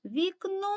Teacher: наголос падає на букву о Ми дуже голосно говоримо саме цю букву а вона знаходиться у другому складі тобто другий склад У нас